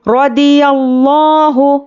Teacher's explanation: را پر زبر ہے، جلدی پڑھیں گے اور را کو پر پڑھنا ہے۔